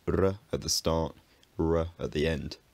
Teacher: it becomes less firm and more liquid towards the ends of words. It's most straightforward to assume that this means r at the start, r at the end.